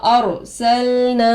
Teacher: را پر ززم آ کر ہے، رائے ساکنہ ہوگا. رائے ساکنہ سے پہلے زبر آ کر ہے، را کو پر کر کے پڑھیں گے. سین پر زبر کی حرکت ہے، زلد پڑھیں گے.